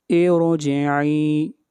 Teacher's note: اس را کو موٹا پڑھیں گے اس لیے کہ جو را سے پہلے کسرہ آ رہی ہے یہ عارضی کسرہ ہے، یہ کسرہ اصلی نہیں ہے.